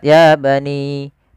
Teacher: ditandai dengan huruf ya yang bertemu dengan huruf alif kecil setelahnya maka ya harus kita panjangkan sepanjang dua harakat